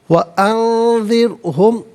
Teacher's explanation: وَأَنذِرْهُمْ، نون ساکن کے بعد ذال حرف اخفاء آ رہا ہے تو نون ساکن کو اخفاء کے ساتھ پڑھیں گے، یعنی یہاں اخفاء کہتے ہیں ناک میں آواز لے جا کر گنگنانا